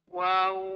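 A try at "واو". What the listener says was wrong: Tak kena. Dia 3 huruf tulisan namanya waw, alif waw. Panjang betul mana panjang?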